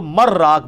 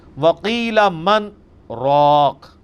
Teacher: یہاں پہ سکتا ہے، ایک ہی سانس میں پڑھنا ہے لیکن تھوڑا سا وقفہ کر کے، ورنہ اگر یہ ڈائریکٹ پڑھا جاتا تو مر راق بنتا، چونکہ نون جو ہے وہ یہ نون غنہ یا جو تنوین ہے وہ اس کے بعد اگر 6 حروف میں سے کوئی حرف آ جائے، یا را میم لام واو نون، تو ادغام ہو جاتا ہے۔